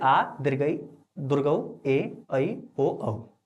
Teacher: दीर्घ स्वर देखो दो मात्रा का समय लगता है। यानी ह्रस्व स्वर के दुगना समय लगता है।